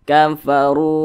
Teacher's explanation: tepat berada di belakang huruf wa sukun maka pasti dibaca panjang ini namanya matobii panjangnya itu dua harakat atau kira-kira dua ketukan